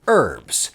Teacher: why do you yanks not pronounce the H in herbs?